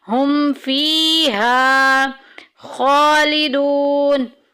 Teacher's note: خالدون میں دیکھیں خا کے اوپر کھڑی زبر، ایک الف کے برابر لمبا کریں گے، اور واو مدہ آ گئی ہے۔